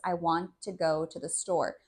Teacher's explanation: the T from want connected to the T in the next word too. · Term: linking sounds together, linking sounds